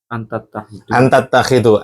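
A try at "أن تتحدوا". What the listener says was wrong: Antattahidu bukan kha ya.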